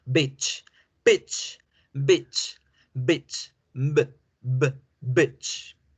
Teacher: Lo que la diferencia es la B de la P. La B debe vibrar, debe generar una vibración un poquito alargada y luego ahí sí soltar el sonido.